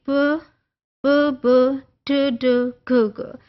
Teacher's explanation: किस तरह से साउंड ब्लॉक हुई है बट एट 3 डिफरेंट पॉइंट्स, और आपको पता है वो कौन से हैं, लेबियल है, वो एल्वियोलर है, वो वीलर है